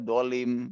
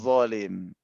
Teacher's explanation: Padahal ini 2 makhraj yang berbeda dan zo itu berdiri di mana, dilihat ini, di lisan itu ujung gigi itu kan ya, ada zo, harusnya di situ penyebutannya